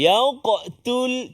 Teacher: selepas huruf qaf tu ada huruf ta. Maka itu antara cabaran dia, iaitulah untuk kita tak tertebal sebut huruf ta